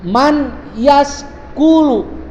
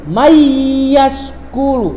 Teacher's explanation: pembacaannya adalah dimasukkan nun mati dan tanwinnya ke huruf idgham bigunah